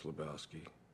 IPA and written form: ləˈbaʊski (Lebowski)